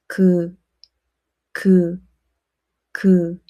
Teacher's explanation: You will feel a soft area. The back of tongue blocks the space very close to the soft area and then releases. It sounds similar to the English G. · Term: 기역